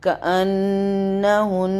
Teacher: یہاں پہ نون مشدد کا غنہ 2 دفعہ ہوگا